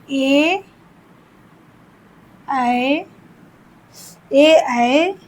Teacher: ए ऐ कंठ तालव्य मतलब कंठ और तालु से होता है। कंठ और तालु से।